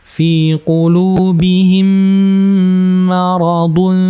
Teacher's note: Kemudian mim ketemu mim, ini idgham mimi ya, ditahan.